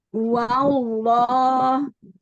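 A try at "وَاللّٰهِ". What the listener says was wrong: Hati-hati tidak wawullah, tapi wal.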